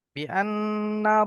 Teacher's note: ওয়াজিব গুন্না একালিফ গুন্না হবে